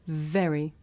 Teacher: When I say very, my teeth are touching my lip.